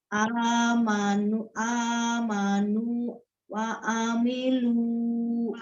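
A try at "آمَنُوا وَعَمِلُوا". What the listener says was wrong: Jangan terjeda, jangan terpisah. Amanu wa amilu. Wa ada wanya. Nah, Umi baca amanu itu kan nggak ada hamzahnya.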